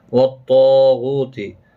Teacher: طا اور الف دونوں پر پڑے جائیں گے۔ جب بھی حروف مستعلیہ کے بعد الف ایک ہی کلمے کے ساتھ آتا ہے تو یہ بھی پر پڑا جاتا ہے۔